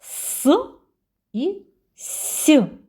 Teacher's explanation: їх вимовляємо ротик напівприкритий утворюється щілина по якій проходить струмінь повітря при вимові виникає шум який нагадує свист